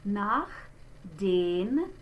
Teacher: So now notice this CH spelling is different from the Ich laut. We call this the Ach laut. It is like a little bit stronger H sound